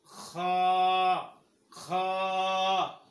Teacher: এরপরে খ, খ, খ, খ, খ, খ, জোরে বলো খ। খ হরফ উচ্চারণ হয় হলকের শুরু হইতে, খ হরফ উচ্চারণ হয় খ, খ।